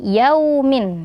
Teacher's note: ada waw sukun sebelumnya huruf berharokat fathah, maka dibaca lin juga ya, dibaca lembut.